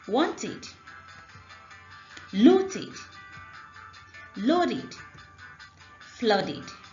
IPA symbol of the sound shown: ɪd